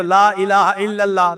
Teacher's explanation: لفظ اللہ سے پہلے اگر کوئی لفظ ہے اور وہ مفتوح ہے یا مضموم ہے تو اللہ کا جو لام ہوتا ہے نا اس کو پر پڑھتے ہیں، اس کو تفخیم کہتے ہیں قراء کی زبان میں۔